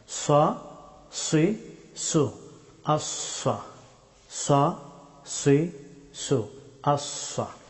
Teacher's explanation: সাদ হরফটি মুখ ভর্তি করে উচ্চারণ করতে হয়।